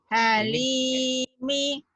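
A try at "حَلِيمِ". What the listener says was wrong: Linya panjang.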